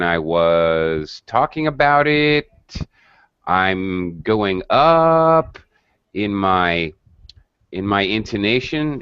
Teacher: You notice when I was talking about it, I'm going up in my intonation, in my tone is rising to show he's not done speaking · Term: non-final rising intonation